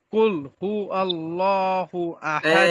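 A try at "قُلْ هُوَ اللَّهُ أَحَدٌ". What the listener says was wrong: এই যে আপনার ভুলটা একটু লক্ষ্য করুন, কুল হু আল্লাহ বলছেন, এখানে ওয়াল্লাহ, ওয়াও গিয়ে সরাসরি লামকে ধরেছে। এখানে আলিফ লামকে ধরে নাই, ওয়াও লামকে ধরেছে। ওয়াল্লাহ, ওয়াল্লাহ আপনার উচ্চারণটা আসছে। কুল হু আল্লাহ। ডাল নিচের দিকে নিয়ে যান।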